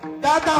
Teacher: दादा म्हणता म्हणता जीभ दाता मागे दडे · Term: दंत्य वर्ण